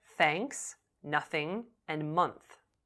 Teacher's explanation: you won't feel any vibration in your vocal cord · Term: unvoiced consonant sound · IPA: /θ/